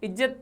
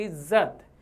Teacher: तो नुक्ता लगने के कारण ज को रगड़ उत्पन्न होती है